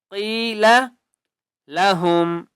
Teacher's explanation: قاف کو ایک الف کی مقدار کھینچ کر پڑھیں گے اور قاف کو موٹا کر کے پڑھیں گے